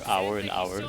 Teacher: the h is just completely silent there